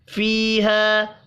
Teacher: یا اور الف مدہ ہیں، دونوں ایک ایک الف کے برابر کھینچ کر پڑھیں گے